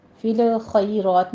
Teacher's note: فی الخیرات، اگر آپ نے یہاں پہ وقف کیا ہے تو تا پر ہمس ہو جائے گی، فی الخیرات نہیں کہنا، فی لام کو سٹاپ کرنا ہے، خا کو پر پڑھتے ہوئے آگے یا لین ادا کرنی ہے